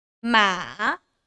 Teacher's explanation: this is called the third tone. You go down and then go up.